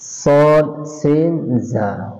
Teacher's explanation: 13 নম্বর মাখরাজ, জিহ্বার আগা সামনের নিচের দুই দাঁতের আগার সাথে লাগাইয়া 3টি হরফ উচ্চারিত হয়